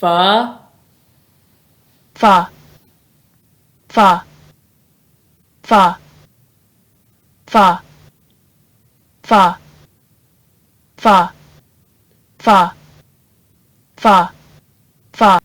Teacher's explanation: The sound f is unvoiced, meaning your vocal cords don't vibrate when producing the sound. Your tongue stays in the lower part of your mouth, and your bottom lip comes up to your upper teeth when pronouncing the sound f.